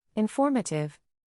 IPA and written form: ɪnˈfɔr.mə.tɪv (Informative)